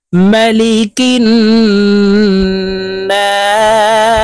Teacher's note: তিন আলিফ টেনে সিনকে সাকিন করে ফেলবো